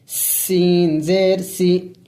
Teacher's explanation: سین سیٹی والے حروف میں سے ہے، یعنی پڑھتے وقت منہ سے سیٹی کی آواز نکلنی چاہیے